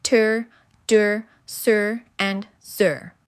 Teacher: Alveolar, this is the most frequent place of articulation in English. The tongue tip touches the tooth ridge right behind your upper teeth. This is where we produce sounds like tur, dur, sur, and zur.